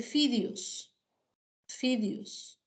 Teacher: Por ejemplo, en la variedad del español que se habla en la costa, ¿no? Existe esta confusión vocálica, ¿ya? Entre la E frente a la I